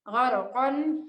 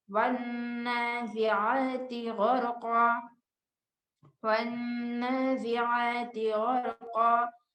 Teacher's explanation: جب اسٹاپ کریں گے تو آخر میں جو دو زبر ہے وہ ڈراپ ہو جائے گا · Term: وقف